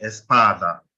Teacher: You can hear the stress on the A, the first A